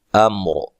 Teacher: امر را کو موٹا وقف کی صورت میں. ملانے کی صورت میں را باریک ہوگی اور نون تنوین کا یہاں کیا ہوگا؟